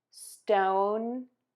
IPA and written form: stoʊn (STONE)